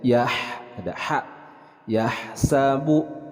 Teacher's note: huruf H disukunkan dan ini adalah bagian dari mahorijul huruf Al halqi yang berada dari tengah tenggorokan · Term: huruf ha disukunkan